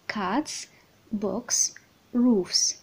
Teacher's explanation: كتنطق اس after voiceless consonants الى جات بعد voiceless consonants ما عدا الاصوات س والش والتش. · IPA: /-s/